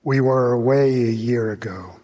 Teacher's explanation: What I hear is that his voice is weak and that it lacks pitch variability